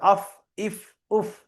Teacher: ফা উপরের দাঁতের আগা নিচের ঠোটের ভিজে অংশে লেগে উচ্চারিত হয়।